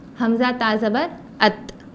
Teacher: تا جو ہے زبان کی نوک اوپر کے دانتوں کے جڑ سے ملانا ہے, اوپر کی دانتوں کے جڑ سے ملانا ہے, جیسا کہ تا, حمزہ تا زبر ات.